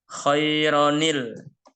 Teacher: tanwin yang bertemu dengan Hamzah washal maka dibacanya menjadi ada tambahan Nun kasroh